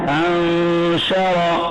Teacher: नून साकिन के बाद 15 हर्फों में शीन आया हुआ है, इख्फाए हकीकी का गुन्ना है।